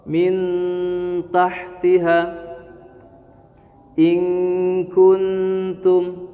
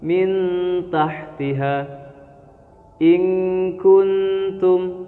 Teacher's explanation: Jadi cara bacanya adalah samar, menyamarkan suara nun atau nun sukun atau tanwinnya. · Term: ikhfa